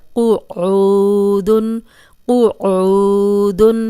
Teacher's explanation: اب دیکھیں یہ قوف موٹا ہے تو موٹا ہی پڑھیں گے، آگے عین پہ پیش اور جزم والی واو ہے، یہ واو مدہ ہے، اس کو 2 حرکات لمبا کریں گے اور قوف کو موٹا پڑھیں گے۔ قعود، عین پہ بھی آپ نے تھوڑی پریکٹس کرنی ہے اور قوف کو موٹا پڑھنا ہے